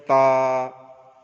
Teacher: তায়ের মাখরাজ জিবের আগা সামনের উপরে দুই দাঁতের গোড়ার সঙ্গে লাগিয়ে উচ্চারিত হয় তা। ত, দাল, তা একই মাখরাজ, কিন্তু ত হবে পুর, অর্থাৎ মোটা করে বলতে হবে, তা বারিক, দাল বারিক, অর্থাৎ পাতলা করে বলতে হবে।